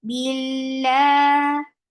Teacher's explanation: Lafz jalala will be light because there is kasra before. Bila. And it is long by default.